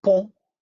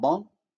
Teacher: we can see how the vowel is nasalized because it is in word final position. In other words, followed by nasal.